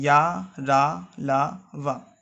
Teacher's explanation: या आपका तालु से है, रा दंत से, ला भी दंत से और वा दंतोष्ठ से। और ये सभी सघोष हैं और अल्प प्राण हैं, यानी कि इसमें कम हवा मुंह से निकलती है और इन सभी में कंपन होगा। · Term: अंतस्थ